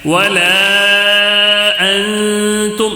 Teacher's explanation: مد منفصل ہے، حرف مد ہے الف، تو اس کے بعد حمزہ دوسرے کلمے میں آیا ہے، تو اس کو بھی 3 الف تک کھینچنا ہے